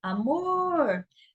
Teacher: Na palavra amor, amor, você tem aqui uma oxítona, o mor é a sílaba mais forte